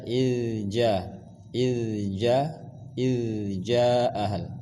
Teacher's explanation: Ja panjangkan 4 sampai 5 harakat, namanya mad jaiz